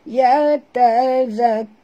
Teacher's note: Dan ra' itu kena baca tebal kerana ra' baris depan.